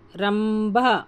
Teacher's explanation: కొంచెం గట్టిగా చదవాలి, భా మహాప్రాణాక్షరం